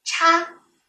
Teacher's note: 叉这个字是翘舌音